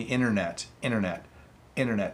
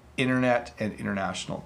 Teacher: in casual conversation and informal conversation if you are speaking quickly you would soften that T